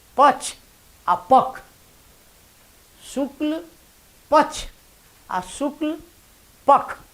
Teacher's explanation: भाखा पत्रिका सेहो निकलै छै मैथिलीमे, नामे छियै भाखा। आ ख आ तथा अक्ष के उच्चारण छ आ ख दुनू होइ छै